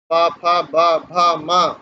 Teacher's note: प, फ, ब, भ, म, ये सब ओष्ठ वर्ण है